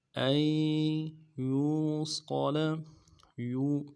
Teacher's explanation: به ان یوصل، ان یوصل، حمزہ کو یا کے ساتھ ملانا ہے، نون ساکن کو نہیں پڑھیں گے بلکہ حمزہ یا کے ساتھ ملائیں گے۔ ان یوصل، یو یا کو واو کے ساتھ ملانا ہے، واو مدہ ہے، ایک الف دال میں کھینچیں گے، صاد کو موٹا ادا کریں گے، لام کو نرم سے ادا کریں گے۔